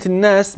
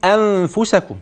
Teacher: النون المشددة حينما تراها لابد أن يكون فيها غنة واضحة جلية هكذا